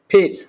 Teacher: আসলে এর সঠিক উচ্চারণ আমি যদি বুঝাতে যাই তাহলে এভাবে বলতে হবে যে পি ও এফ এর মাঝামাঝি উচ্চারণ হলো ফির। দুই ঠোঁট মিলিয়ে মুখের ভিতর থেকে জোরে আওয়াজ বের হবে, তাহলে ফির সঠিক উচ্চারণ হবে